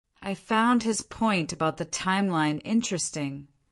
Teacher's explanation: describing something as interesting in that deliberate flat tone almost always means the opposite. It's unacceptable or foolish.